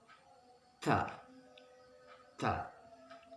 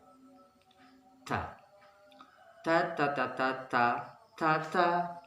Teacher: Lidah menempel di gusi atas. Ta. Lidah tidak boleh keluar. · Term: huruf ta